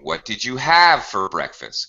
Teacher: when we end the sentence with a low intonation we're asking an information question